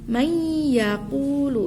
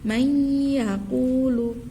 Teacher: Nun mati bertemu ya, hukumnya idgham bi gunnah. Nah, ketika idgham bi gunnah berarti harus mendengung. Berarti may yaqulu.